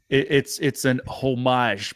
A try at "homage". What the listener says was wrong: We don't pronounce the H on homage like a proper American.